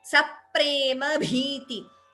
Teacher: Saprema, there is an extra p heard, stress before pa. Saprema bhiti, bha is mahaprana.